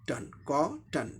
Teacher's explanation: पहले सिलेबल में vowel sound है लेकिन दूसरे सिलेबल में वावल साउंड नहीं है , सिर्फ कॉन्सोनेंट ही है, ट भी कॉन्सोनेंट, न भी कॉन्सोनेंट, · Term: सिलेबिक कॉन्सोनेंट